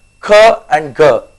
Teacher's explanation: they are produced you know somewhere you know at the back part of the mouth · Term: velars